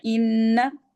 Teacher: ना को लंबा ना करें, ना को ना लंबा नहीं करना,